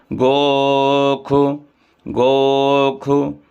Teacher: गोख इसके बाद गो खु यहां भी ख ही उच्चारण होगा यजुर्वेद मध्यानी शाखा में हमेशा जो है तो इस श को खा बोला जाता है